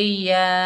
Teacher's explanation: मद मुनफसिल जायज़, इसको 3 अलिफ की मिकदार खींचकर पढ़ेंगे, या। हमज़ा के ऊपर खड़ा ज़बर, 1 अलिफ की मिकदार खींचकर पढ़ेंगे, आ।